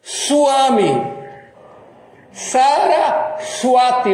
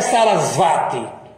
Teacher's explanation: Quando o V vem depois de uma consoante que não seja uma semivogal, tá? Aí ele tem som de U.